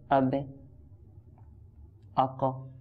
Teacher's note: কলকলা বলতে সামান্য একটু ধাক্কা হয়, অতিরিক্ত না নর্মালি